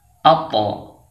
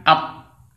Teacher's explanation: Huruf ta apabila disukun atau dimatikan wajib dibaca dengan mantul atau qalqalah. Jadi ini yang benar membacanya atto, bukan at.